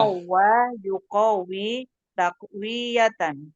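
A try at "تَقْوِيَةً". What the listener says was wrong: pendek wawunya, takwiyatan, dari tasdid, ya kan? Tarbiyah, tidak tarbiyah, tapi tidak ditasdid.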